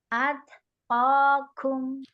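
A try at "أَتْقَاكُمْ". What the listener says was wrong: Jangan dilepas makhrajnya. Iya, lidahnya masih di makhrajnya, hanya direnggangin sedikit aja.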